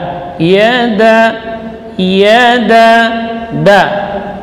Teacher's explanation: Kalau dal itu syiddah dan jahar ya, jadi huruf yang kuat, ujung lidah di usul thanaya al-ulya. Da tipis ya, bukan da itu ya, tapi da.